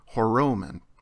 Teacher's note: ending is once again attached with an Omicron so this time the Alpha and Omicron contract together to form a single Omega